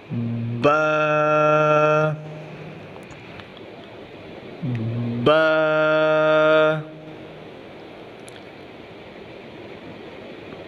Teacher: बा को पढ़ते वक्त दोनों होंठों को आपस में मिलाया जाता है और मुंह को खोल दिया जाता है